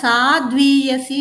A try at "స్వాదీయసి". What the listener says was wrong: ముందు ముందు అక్షరంలోకి రావాలి స్వ